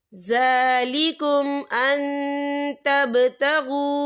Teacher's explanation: तो हम यहाँ इक्फा करेंगे, नून साकिन की आवाज़ को नाक में छुपाएंगे।